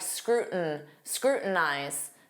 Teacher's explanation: Native speakers will often drop that T and form a flap T and it will sound like scrutin scrutinize.